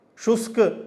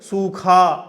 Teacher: शुष्क अल्प प्राण था, सूखा महाप्राण हो गया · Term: महाप्राणीकरण